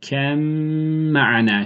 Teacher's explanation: Buradaki idgam ba harfi mime katılacak.